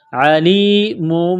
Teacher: عین کو گلے سے نکالیں گے زور لگا کر